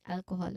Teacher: The stress is on the first syllable all